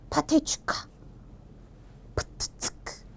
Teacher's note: 성대 근육을 긴장시키는 데다가 숨이 거세게 나오는 거센 소리